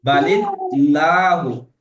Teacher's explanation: আল্লাহ শব্দের আগে যদি জের থাকে, তাহলে আল্লাহর নাম বারিক করে পড়তে হবে, অর্থাৎ লা উচ্চারণ করে পড়তে হবে।